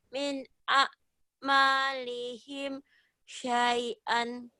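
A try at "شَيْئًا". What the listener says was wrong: Syai'an dihentikan jadi syai'a ya. Min a'malihim syai'a. Jadi panjang tapi syai'a.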